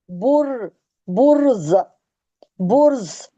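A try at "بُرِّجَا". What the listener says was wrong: बुर्ज कहाँ से आप मार रही हैं? रॉ जा जेर क्या होगा? रॉ को जा से मिलाना है ना।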